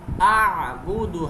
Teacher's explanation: اعبد، حمزہ کی آواز اور عین کی آواز میں فرق کریں گے اور عین کو حلق کے درمیان سے ادا کریں گے